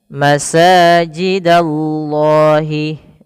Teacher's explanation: ada sin berharakat fathah bertemu dengan alif. Maka di sini mad thabi'i panjangkan dua harakat.